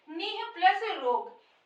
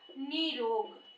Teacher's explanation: विसर्ग का लोप हो जाएगा, और जो ये ह्रस्व ई है वो दीर्घ ई हो जाएगा